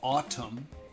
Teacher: I would say the N is silent in autumn.